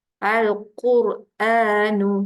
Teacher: Makhraj huruf lam dekat hujung lidah. Huruf qaf dekat mana? Huruf qaf kat pangkal lidah. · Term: huruf lam dengan huruf qaf